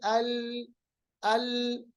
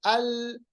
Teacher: मिसाल के तौर पर आप पढ़ेंगे लाम, लाम को साकिन बनाइए, पढ़िए अल अल। आप देखिए लाम की आवाज कंटिन्यू रहती है, ठीक है, जिसकी वजह से लाम नरम बन जाता है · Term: रिख्वत